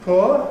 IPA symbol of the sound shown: pʊə